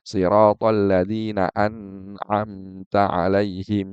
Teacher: an'amta ini harusnya dibaca izhar ya tapi dibaca dengan ghunah enggak boleh